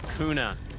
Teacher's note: it's pronounced kuna there's no r sound in it at all